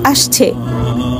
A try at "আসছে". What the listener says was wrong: আরে আবার ছ উচ্চারণ করছেন